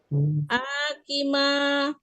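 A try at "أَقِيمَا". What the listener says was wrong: Enggak pendek A-nya. Aki. Ya pola afala ya, tapi kan dia tidak ada kata dengan alif.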